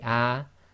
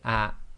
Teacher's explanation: It's sort of almost half the length of a normal fatha. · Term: hamza with sukoon